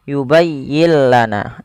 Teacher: nun mati bertemu lam, suara nunnya kita hilangkan dan kita masukkan langsung kepada huruf lamnya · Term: idgham bila gunnah